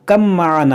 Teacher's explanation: بنی ارکب معنا، دیکھیں یہاں پر کاف با میم زبر کم، یہ با جو ہے میم میں داخل ہو جائے گا، اس با کی یہاں پر آواز نہیں آئے گی